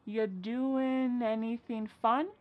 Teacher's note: Ya doing, we're dropping that G again.